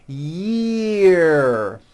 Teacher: Year, and that has a high vowel sound, E, year